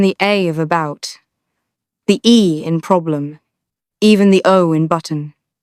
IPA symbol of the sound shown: ə